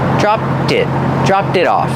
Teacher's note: And the T in it is a fast D